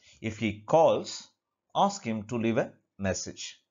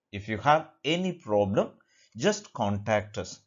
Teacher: the first part conditional part takes the rising tone whereas the fulfilling part consequent part takes the falling intonation